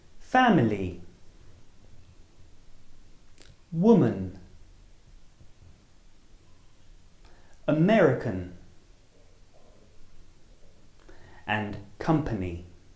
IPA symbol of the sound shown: m